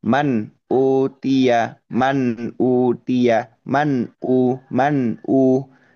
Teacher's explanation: pembacaan nun sukun itu tidak tidak melebur dengan huruf setelahnya yaitu huruf hamzah. Saling lepas gitu kan ya. · Nun sukonnya dibaca jelas, hamzahnya juga dibaca jelas dan tidak ada proses atau kegiatan mendengung. sama sekali itu izhar situ. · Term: izhar halqi